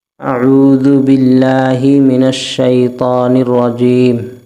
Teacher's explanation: نون کو شین میں ملائیں گے، نون کو را میں ملائیں گے، الف لام نہیں پڑھیں گے